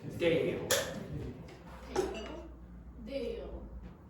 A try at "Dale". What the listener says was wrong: He had the issue with the L sound at the end again.